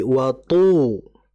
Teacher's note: Tu itu ya. Karena to ini sifatnya bukan hanya isti'lah, bahkan dia juga sifatnya itbaq. Jauh lebih tebal dibandingkan sifat isti'lahnya.